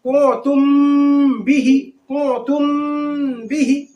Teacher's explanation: میم ساکن کے بعد اگر با آ جائے تو اخفاء شفی ہوگا، یعنی غنہ کریں گے. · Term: اخفاء شفوی